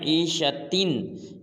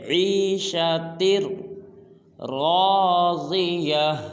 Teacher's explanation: آگے را مشدد ہے، تا کو را کے ساتھ ملائیں گے جیسے عیشتر راضیہ، را کو بھی پورا ادا کریں گے، ضاد کو بھی پورا ادا کریں گے۔